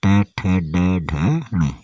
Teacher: फिर आता है ट वर्ग। इसको बोलते हैं मूर्धन्य स्पर्श व्यंजन।